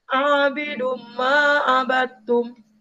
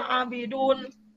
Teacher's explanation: Jadi bacaannya itu harus didengungkan, mengikuti, sehingga huruf nun mati atau tanwinnya mati sama sekali, tidak terdengar. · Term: idgham bigunah